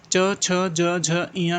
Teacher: च छ ज ञ के उच्चारण होता है तालू से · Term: तालव्य